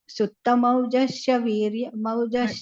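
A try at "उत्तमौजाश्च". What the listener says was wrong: ಅಲ್ಲಿ ಉತ್ತಮೌಜಾಶ್ಚ ಅಲ್ಲಿ ದೀರ್ಘ ಇದೆ. ಉತ್ತಮೌಜಾಶ್ಚ ವೀರ್ಯವಾನ್.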